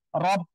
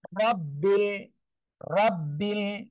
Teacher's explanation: রর উপরে জবর বা পেশ হলে র অক্ষরটা মোটা আওয়াজে পড়তে হবে। বাংলায় সিম্পল র এর মতো হবে।